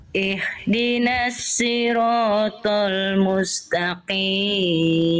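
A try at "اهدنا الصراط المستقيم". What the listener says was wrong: Si, huruf shad jangan si. Ihdinas si. Oke, Bunda coba lafalkan SI biasa. Si. Sekarang Bunda rasakan melafalkan si, tapi lidah Bunda didorong ke dalam. Si. Bukan tengah lidah yang diangkat, dorong ke dalam lidahnya. Si.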